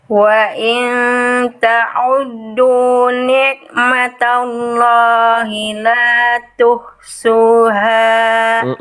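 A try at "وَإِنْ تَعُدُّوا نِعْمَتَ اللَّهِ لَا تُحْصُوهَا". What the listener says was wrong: Yang ini hilang lagi. Oke, kita latih dulu Bunda ain sukunnya. Bunda, ain sukun yang Bunda lafalkan itu sudah menjadi ain. Tapi apa kesalahannya? Hurufnya huruf ain, keadaannya bersukun. Berarti kita latih huruf ain bersukun.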